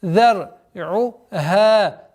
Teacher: Долгота в размере 2 огласовок фатха над буквой ха.